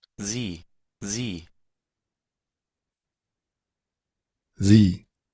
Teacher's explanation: pronunciación con S vibrante y una I larga